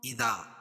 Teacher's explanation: الف مدہ، الف سے پہلے زبر ہے، ایک الف کے برابر کھینچ کے پڑھیں گے